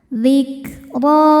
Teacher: Huruf ro dibaca tafkhim karena barisnya fathah. Cara bacanya ditebalkan.